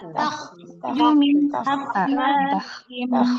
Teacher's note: Tebalkan dengan mentipiskan ta. Mentebalkan kho, mentipiskan ta.